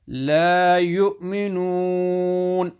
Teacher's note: stretch the noon, which is madde asli at the end of sentence.